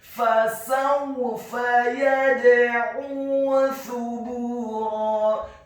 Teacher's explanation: huruf ain-nya ditekankan keluar dari tenggorokan bagian tengah dhammah 2 harokat karena setelahnya ada huruf wawu sukun.